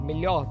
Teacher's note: No Rio de Janeiro se diz melhor, com esse h ou h mais sonoro, ou às vezes é só omitido